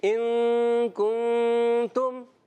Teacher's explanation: تو یہاں تم میں غنہ نہیں کریں گے